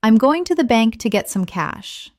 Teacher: Notice how certain words are stressed: going, bank, get, cash.